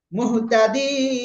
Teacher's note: এক আলিফের জায়গায় কয় আলিফ টেনে পড়বো? 3 আলিফ টেনে পড়বো।